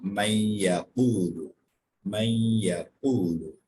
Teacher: So after Noon Sakin Ya comes, that's why we're changing or we're assimilating the sound of Noon into Ya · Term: Idgham